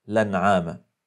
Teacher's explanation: الى كلمه جديده فقال كسر انما الانعام لانعام حدث هنا نقل حيث نقلت حركه الهمزه الى الحرف الساكن قبلها وهو اللام ثم حذفت الهمزه